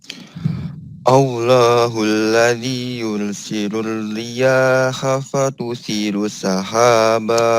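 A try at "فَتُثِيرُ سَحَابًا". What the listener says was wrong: Fatusiru sinya panjang.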